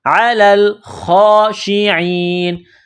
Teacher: عین گلے کے درمیان سے عین کو نکالیں گے. لام کو لام کے ساتھ ملانا ہے، پلس کرنا ہے.